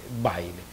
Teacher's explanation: como semivocal en diptongo decreciente